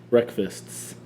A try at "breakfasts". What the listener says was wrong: Why are you putting an SK?